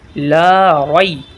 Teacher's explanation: اس میں لا کو کھینچیں گے، لام کے بعد یہ الف مدہ ہے